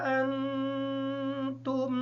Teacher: نون ساکن ہونے کی وجہ سے اس پر غنہ ہوگا، میم ساکن ہونے کی وجہ سے اس پر غنہ ہوگا۔